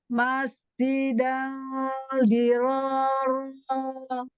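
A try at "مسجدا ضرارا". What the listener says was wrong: Belakangnya agak aneh. Oke, sinnya kurang rafah. Coba lagi.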